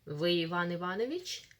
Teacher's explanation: Mind the intonation, general question. Вы Иван Иванович? The rising one.